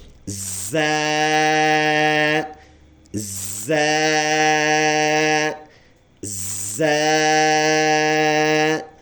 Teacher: اس کو اور ذال کے ادا کرنے میں یہی فرق ہے کہ اس لفظ کے پڑھتے ہوئے آواز سی ٹی جیسے ادا ہوگی، یعنی وسل ساؤنڈ ہمارا، یعنی بالکل سی ٹی والا آواز اس میں بنے گا ایسے زا زا زا. · ایک الف کے برابر ہم نے اس کو لمبا کر کے پڑھنا ہے تاکہ ہمارے بچے اس کو جلدی تلفظ کر کے ختم نہ کرے، بلکہ وہ جان لگا کے اس کو آرام سے پڑھے اور اس کی اچھی اور صحیح تلفظ ہو. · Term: سی ٹی والے حروف